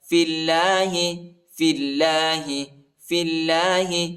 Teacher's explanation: اللہ کے نام کو باریک پڑھیں گے، نرم پڑھیں گے، الف نہیں پڑھا جاتا، الف پر حرکت نہیں۔